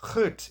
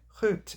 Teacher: the G sound is pronounced further back in the throat in the Netherlands than it is in Belgium. This results in words like goed in the Netherlands and goed in Belgium.